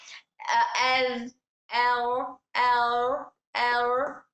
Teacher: Flat lips अदा कर रहे हैं। जबान ऊपर को नहीं हो रही। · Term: सिफत इनफिता